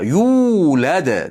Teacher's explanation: Yuu deb cho'zamiz ikki harakat miqdorida. Yuulad. Dada qalqala qilamiz.